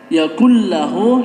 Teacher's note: Ketika ada nun mati bertemu dengan lam atau bertemu dengan ra, itu keduanya merupakan idgham bila gunnah. Yakullahu ini tidak dengung ya, bacanya tidak didengungkan